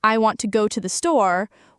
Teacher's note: want and store are stressed, while to and the are less stressed.